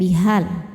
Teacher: Namun jika diteruskan hanya ini dibaca pendek bihal. Gugur madnya. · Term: takhallus bil hadzfi